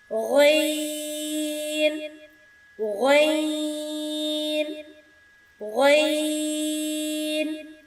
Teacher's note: غین، ادنی حلق سے، حلق کا وہ حصہ جو منہ کی جانب ہے وہاں سے ادا ہوگا۔